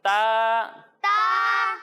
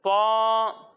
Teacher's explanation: ایک حرف ہے تا اور دوسرا حرف ہے طا۔ جب ہم تا کی ادائیگی کریں گے تو اسے باریک پڑھیں گے، اور جب ہم طا کی ادائیگی کریں گے تو یہ حروف مستعلیہ میں سے ہے، اس لیے اسے ہم موٹا کر کے پڑھیں گے